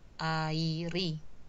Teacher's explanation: konsonan akhir di kata dasar air ini bergeser ya, bergeser bergabung dengan sufiks i-nya